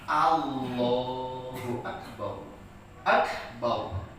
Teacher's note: Ro sukun sebelumnya ada huruf yang berbaris fathah, hukumnya tafkhim.